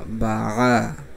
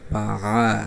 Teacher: গলার ভিতর থেকে, হ্যাঁ, কণ্ঠনালীর মধ্যখান থেকে উচ্চারণ হবে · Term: আইন